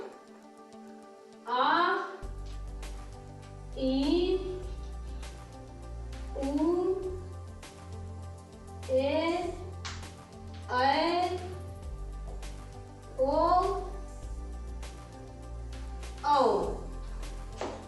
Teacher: वे स्वर जिनका उच्चारण करने में लघु से 2 गुना समय लगता है, यानी ह्रस्व स्वर से 2 गुना समय लगता है, उन्हें दीर्घ स्वर कहते हैं।